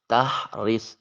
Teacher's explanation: ہا کو حلق سے ادا کریں، را کے نیچے زیر ہے باریک ادا کریں گے